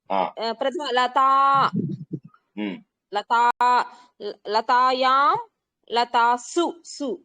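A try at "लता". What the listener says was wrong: Correct correct correct, very good.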